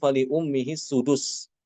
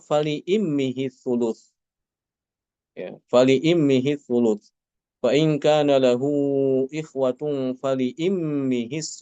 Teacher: Untuk Imam Alqisai ya dia dengan mengganti domah dengan kasrah